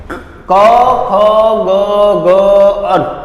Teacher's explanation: કંઠમાંથી બોલાય છે, એટલે આને કહી છીએ આપણે કંઠ્ય.